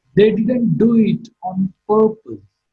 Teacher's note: Purpose is marked with a falling tone. So in all these statements, the speaker uses the falling tone in order to convey his sense of finality.